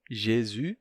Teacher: O S final fica mudo, o U se torna U, Jésus.